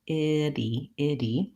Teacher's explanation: It sounds like a light D. My tongue still taps up, iddy, iddy, and releases, but I don't build up a lot of air. I don't really want to punch that D sound. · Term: flap T